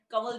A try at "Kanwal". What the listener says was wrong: And the N in between. See, it's not Kamal, it's not Kaval, it's Kamal.